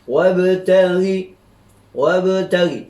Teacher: Kemudian bila kita baca dengan wasal wabtaghi itu, di situ ada ba huruf qalqalah, pastinya dibaca dengan melantun